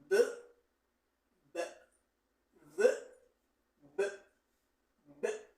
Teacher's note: the bilabial sound is produced, in other words, because we join the lips and we produce this sound.